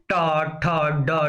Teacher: मूर्धन्य का मतलब होता है जब हमारी जीभ क्या होती है? मुड़ी हुई होती है।